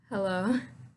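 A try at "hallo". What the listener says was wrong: Not the heh heh Try to stick your tongue in against your teeth and say hello. Hello.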